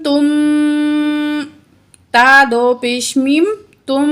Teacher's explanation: جب تنوین کے بعد میم مشدد آ جائے تو وہاں ہم کیا کریں گے، ادغام مع الغنہ کریں گے، ٹھیک ہے، یعنی کہ ہم یہاں تنوین کو میم کے ساتھ ملا کر غنہ کر کے پڑھیں گے